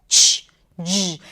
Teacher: Again, you take the voiced stop sound D and then you release it gradually to the fricative J. This is the voiced.